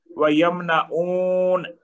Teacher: واو ساکن یہ واو مد بن جائے گی اور نون پر زبر ہے یہ ایک حرکت دیں گے. وَيَمْنَعُونَ، اور نون کو اگر آگے حمزہ واصل ہے اس وجہ سے لام سے ملا کر وَيَمْنَعُونَ الْمَاعُونَ میم پر ایک حرکت ہے، آگے الف مد ہے تو اس کو 2 حرکت دیں گے.